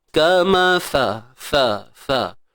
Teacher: Jadi huruf sa ni jangan lupa keluarkan sedikit hujung lidah kita.